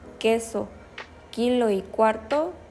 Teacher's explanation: la lengua y en su modo de articulación es oclusiva porque la parte trasera de la lengua entra en contacto con el velo e impide El paso del aire y en su sonoridad es sorda porque no produce ninguna vibración · ninguna vibración en las cuerdas vocales